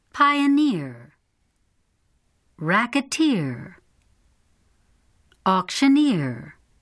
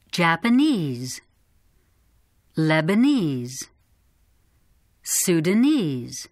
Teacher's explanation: the suffixes of the following examples have primary stress